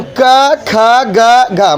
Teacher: कंठ से बोलते हैं, इसीलिए कंठ है वर्ण